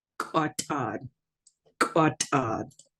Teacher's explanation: We also have that glottalized T, which is just a harder T sound. The regular T is t, t, t, with the glottalized being quatad.